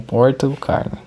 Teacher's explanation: De acordo com alguns estudos, uma inovação português brasileiro é o R caipira. Às vezes tão intenso que parece valer por 2 ou 3